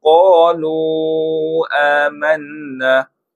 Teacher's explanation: huruf mim yang ada tanda sukun bacaannya jelas tanpa dengung. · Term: izhar syafawi